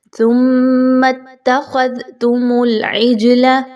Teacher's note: ذال کے مخرج کو آپ نے نرمی کے ساتھ پڑھنا ہے، اور اس میں سیٹی کی آواز کو نہیں لانا، بالکل ختم کرنے کی کوشش کرنی ہے۔